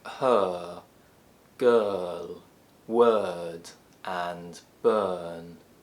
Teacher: Next we have the sound, also known as the open mid-central unrounded vowel sound, because our jaw is between the open and middle positions, our tongue is in the center, and our lips are unrounded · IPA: /ɜː/